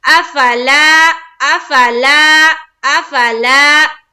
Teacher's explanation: हमजा के ऊपर जबर की हरकत, फा के ऊपर भी जबर की हरकत, दोनों को हम क्या करेंगे, जल्द अदा करेंगे, ठीक है। और लाम अलिफ जबर ला, यहाँ देखिए अलिफ मद्दा का कायदा हो रहा है, यहाँ एक अलिफ के बाकदर खींचेंगे।